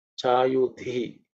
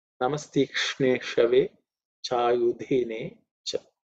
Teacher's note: dha is the fourth letter in the third varga, so it has to be aspirated